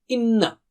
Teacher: Don't say it from the tip of the tongue. Ghunna, ghunna means to have nasal sound, two harakat